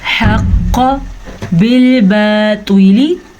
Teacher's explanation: قاف کو پر پڑھیں کیونکہ قاف، طوا، صاد، ضاد، ظوا، غین، خا، یہ 7 حروف ہمیشہ ہی پر یعنی کہ موٹے پڑھے جاتے ہیں